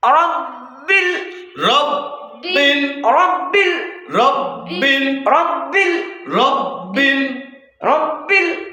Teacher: বাটা উচ্চারণ হবে কোত্থেকে? দুই ঠোঁটের ভেজা অংশ থেকে।